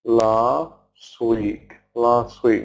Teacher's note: notice I didn't pronounce t in last